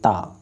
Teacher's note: दंत मतलब दांत के द्वारा जैसे ता तो दांत आपस में टकरा रहे हैं